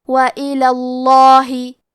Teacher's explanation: ضاد حروف التفخیم میں سے ہے، تو ہم یہ حرف کو موٹی آواز میں پڑھیں گے. یہاں لفظ الجلالہ کے لام کا حکم ہے تفخیم، تو ہم حرف اللام کو موٹی آواز میں پڑھیں گے